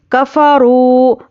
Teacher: कफ़रू, हरकत को जल्दी पढ़ना है। रावो पेशरू वाव मद्दा है, एक अलिफ के बराबर खींचिए।